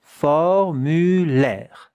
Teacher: You hear the R, but you don't hear the E.